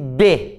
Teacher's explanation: Vê a diferença entre A, que não tem obstáculo nenhum, e B. Ó, o B, eu junto os dois lábios para atrapalhar a saída do ar, certo? Então, por isso que o B, por exemplo, é um fonema bilabial, porque eu junto os dois lábios para pronunciá-lo, tá?